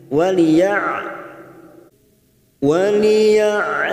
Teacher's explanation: Ain sukun Jangan samakan dengan Hamzah karena Ain sukun memiliki sifat tawasud mengalir